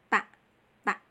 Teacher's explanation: Makhrajul huruf ta, punggung ujung lidah kita menempel ke gigi gusi bagian atas ya. Gigi gusi seri atas ya.